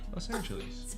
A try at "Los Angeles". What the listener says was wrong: You're saying it like a lease, like a 1-year lease. Los Angeles.